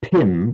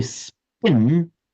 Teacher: Now just as you were saying in English when we say pin we hear feel that there's that p puff of breath coming out whereas if we say spin there's no puff of breath or a lot less